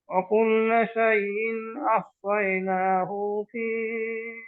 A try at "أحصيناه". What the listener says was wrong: উতে মাদ হবে না ভাই।